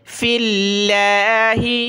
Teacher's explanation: وَالَّذِينَ ہاجروا، را واو پہ شروع، ہاجروا، لفظ اللہ سے پہلے فا پر زیر ہے تو یہاں فا کو لفظ اللہ کے ساتھ ملایا، لفظ اللہ کو باریک پڑھیں گے